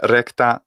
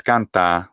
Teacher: an example here of a recta, which is a trokey, versus canta, which is a spondee